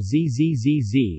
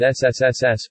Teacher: if one places the fingers on the voice box ie the location of the Adam's apple in the upper throat one can feel a vibration while Z Z Z Z is pronounced but not with SSSs